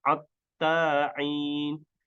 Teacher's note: dibaca atta'in oleh suku Huzail, yakni dengan mengganti huruf ha menjadi huruf ain